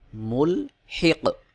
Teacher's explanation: কফের উপরে যখন সাকিন চলে আসবে তখন কফকে কলকলা করে উচ্চারণ করে পড়তে হবে